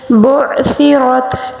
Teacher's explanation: عین کو بالکل درمیانی حلق کے حصے سے ادا کیا جائے گا